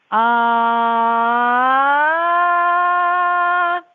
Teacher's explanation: It's a steady ah and a glide up. So, it would be ah.